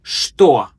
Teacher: it's pronounced with a sh sound, not che